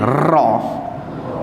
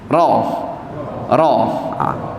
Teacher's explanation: Ra tu dia ada satu getaran. Tempat sama juga, hujung lidah letak di lelangit dekat dengan gusi, tapi dia ada getaran, dia kena getak.